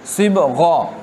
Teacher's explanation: صبغہ غین کو ہم نے پر پڑھا، صبغہ، اور عابدون باریک